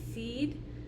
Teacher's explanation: the first vowel is going to be a high one at the front and it's going to be the e sound as in seed